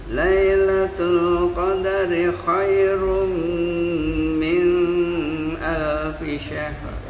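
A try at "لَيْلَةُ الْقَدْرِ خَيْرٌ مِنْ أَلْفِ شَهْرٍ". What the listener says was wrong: Minnya jangan lama-lama, naikin ke atas ke hidung.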